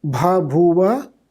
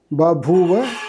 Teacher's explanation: the first two aspirated stops within a word so that the first lost its aspiration. These are voice aspirate stops in Sanskrit and voiceless aspirate stops in Greek. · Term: Grassmann's law